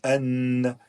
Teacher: le Noun il est prononcé avec la langue le bout de la langue d'accord et qui va venir dans les deux dents de devant mais pas devant